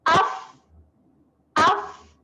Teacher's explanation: Bibir bawah bertemu dengan gigi atas. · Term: huruf fa